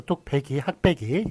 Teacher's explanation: 예, 그래가지고 뚝배기 요거는 빼기로 소리가 납니다만 기역 뒤 무성음 뒤이기 때문에 된소리 현상에 따라서 무성음과 무성음이 연속이 되면 뒤에 이렇게 된소리가 난다는 된소리 되기 현상